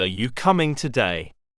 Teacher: final Rising pitch for a yes no question